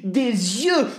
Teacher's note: No, but listen, because you is pluriel, the article in front of it will either be les or des. And because it ends with the S, then it will be the liaison with the vowel sound of you, and it will be des yeux.